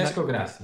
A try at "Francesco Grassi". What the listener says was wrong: Francesco Grassi. Francesco. You've got to say it with a much more sort of rounded Francesco.